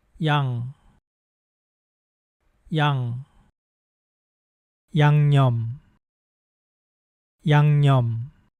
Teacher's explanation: the end of that first syllable has the same final sound as the ng in English